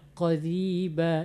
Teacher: Kalau ro tipis itu ro baris bawah, qariba, jangan ada suara getarannya lagi ya. Qariba, ada ri itu salah, makanya dia harus tipis ya.